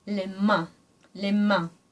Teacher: not quite closing the back of your mouth and that's what makes that nasal sound in French